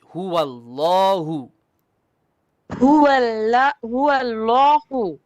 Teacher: The lam here is going to be heavy.